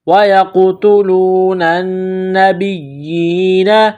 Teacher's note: نون مشدد ہے تو یہاں غنہ کریں گے، آواز ناک میں چھپائیں گے